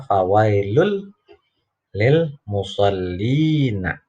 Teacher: Tanwin ketemu lam, idgham bila guna, idgham tanpa dengung ya. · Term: idgham bila ghunna